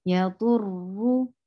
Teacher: you're making ra heavy because there is dhamma at the top